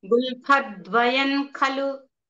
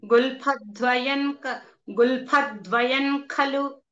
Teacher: ఆ నకారం నకారం వినపడకూడదు క ఖ గ ఘన వినపడాలి అన్నమాట అలా అని వినపడేటట్టుగా చెప్పక్కర్లేదు మామూలుగా అది సహజంగా న్యాచురల్ గా క ఖగ